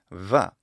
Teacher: a bilabial fricative, which is how I pronounce it in the Lucian pronunciation